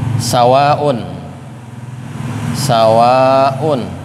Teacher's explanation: Jadi sawaun itu satu kata. Nah, jadi ada mad tabi'i setelahnya hamzah. Nah, ini disebut mad wajib muttasil.